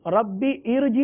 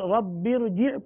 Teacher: अब आप देख सकते हैं कि जब हमने पढ़ा रब्बिरजी तो यकीनन हमजा नहीं पढ़ा गया, हमजा की जो ज़ेर है वो भी नहीं पढ़ी गई। तो जब हमजा नहीं पढ़ी गई तो चूंकि हमजा नहीं पढ़ी गई, इसकी ज़ेर आरजी हुई कि कभी है कभी नहीं है।